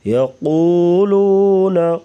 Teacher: یقولون قاف کو موٹا پڑھیں گے، واو مدہ ہے تو اسے لمبا کریں گے.